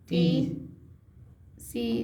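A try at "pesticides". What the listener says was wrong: पीस नहीं भाई, पेस्टी। एस्ट है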